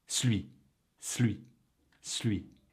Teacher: But when spoken quickly, ''Celui'' becomes more like ''Slwee''.